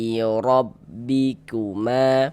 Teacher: Jadi kalau ada alif, sebelum alif ada huruf yang memiliki harokat fathah, maka huruf yang memiliki harokat fathah dibaca panjang. Misalnya ma dibaca panjang, mad tabi'i panjang 2 harokat